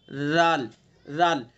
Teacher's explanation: राल का मखरज वही जो सा का पढ़ा है आपने, जबान की नोक सना उलिया का किनारा